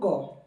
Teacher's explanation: क को उच्चारित करते समय जो हमारा कंठ भाग जो हमारी जीभ है, जीभ के कंठ भाग का प्रयोग किया जा रहा है।